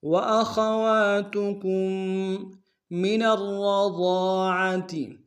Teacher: کے ساتھ ملائیں گے، را کے اوپر تشدید زور دیں گے، دونوں را کو موٹا ادا کریں گے